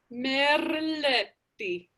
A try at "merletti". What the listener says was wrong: Much, much better.